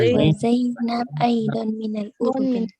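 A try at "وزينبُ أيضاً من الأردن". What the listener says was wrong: Kalau di tengah-tengah, hindari kita baca membacanya dengan sukun. Jadi kita bacanya wa Zainabu aydan minal Urdun.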